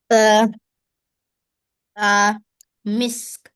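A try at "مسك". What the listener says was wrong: MashaAllah. That's a great pronunciation. You pronounce it well.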